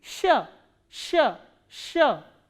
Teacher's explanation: consonant which is produced when your tongue stretches up word and your middle part of the tongue goes upward to the hard palate then this sound is produced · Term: soft consonant